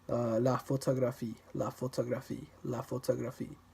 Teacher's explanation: in the French word la photographie, photography, you don't stress any particular syllable